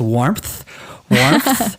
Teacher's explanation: There is a P sound in there, but there is no P in the way it's spelled. But I think it's because if you try to pronounce it without that linking P sound, it's really hard.